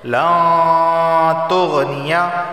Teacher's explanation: نون ساکن کے بعد تا آیا ہے، تا حروف اخفا میں سے ہے، اخفا والا غنہ ہوگا